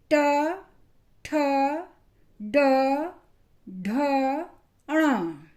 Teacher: टंग मूर्धा का स्पर्श करती है, मूर्धा को छूती है। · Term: ट वर्ग